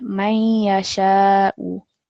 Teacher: we want a bit more of a nasal sound to come through on this noon sakin